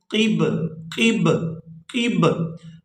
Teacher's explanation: یہ جو با ہے با حروف قلقلہ میں سے ہے تو یہاں پر ساکن کی وجہ سے با پر قلقلہ کریں گے اور اس کو پڑھیں گے قب قب قب.